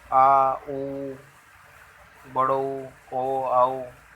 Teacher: पश्च स्वर मतलब पिछले वाला भाग, जीभ का पिछला वाला भाग कार्य करता है।